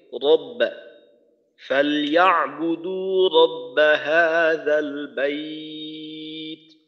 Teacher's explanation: রটাকে মোটা করে উচ্চারণ করা যেন রটা পাতলা হয়ে না যায়। আর একটা বিষয় হলো র মোটা করার সময় যেন ঠোঁট গোল হয়ে না যায়, ঠোঁট খোলা রেখে রব্বা ফালইয়াবুদু রব্বা হাযাল বাইত।